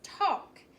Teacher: the a in talk doesn't follow our rules it makes the ah sound instead of the app or the a so that's what makes